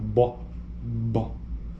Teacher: é uma consoante oclusiva bilabial